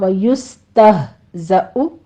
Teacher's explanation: ویستہزأ سین پر سیٹی کی آواز ہوگی، ہمس کے ساتھ پڑھنا ہے